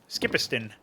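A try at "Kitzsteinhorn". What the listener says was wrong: Chi piston. Yeah, it's pronounced chi. Chi piston.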